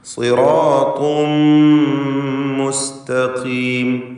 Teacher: തൻവീനിനെ പൂർണ്ണമായും മീമിലേക്ക് ലയിപ്പിച്ച് ഇദ്ഗാം ബിഗുന്ന കാമിൽ നൽകി മണിക്കുക.